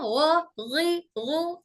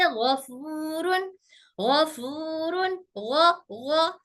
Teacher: गैन हमारे हलक के ऊपरी हिस्से से अदा होता है